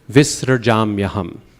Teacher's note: That SR, very short, quick, visrajam yaham.